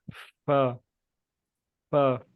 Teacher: ऊपर वाले जो दांत हैं नीचे वाले होंठों के साथ टच हो रहे हैं। फा फा, और इसमें होंठ सही तरह लंबे होते हैं, जिस तरह हम मुस्कुराते हुए होंठ लंबे करते हैं, फा इस तरह होंठ लंबे होते हैं।